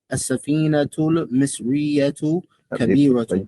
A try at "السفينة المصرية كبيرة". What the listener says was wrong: But you can't stop after the alif lam. سفينة المصرية السفينة المصرية السفينة المصرية.